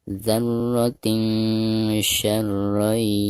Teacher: Maka cara membaca tanwin yang ada di bawah ta marbutoh tersebut itu harus disamarkan disertai dengan gunah. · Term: huruf ikhfa